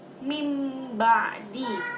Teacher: mengubah nun mati atau sukun menjadi huruf mim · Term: iqlab